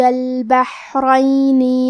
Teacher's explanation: کلمت البحرین میں ہا ساکن ہے. ہا کی ادائیگی حلق کے درمیان والے حصے سے ہے اور کیونکہ اس پہ جزم ہے تو ہمیں ہا کو ظاہر کرنا ہے.